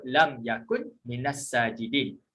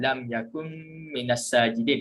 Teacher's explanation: kita akan mengidghamkan dengung dan idghamkan nun kepada mim